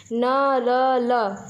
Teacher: जिन व्यंजनों के उच्चारण में जिह्वा ऊपरी मसूड़ों को स्पर्श करती है उसे वर्त्स्य व्यंजन कहते हैं।